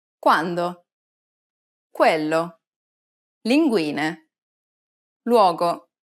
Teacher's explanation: When U precedes another vowel, it takes on a W sound.